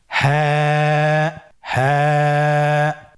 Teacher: হা হরফটি উচ্চারণের স্থান কন্ঠনালীর শুরু হতে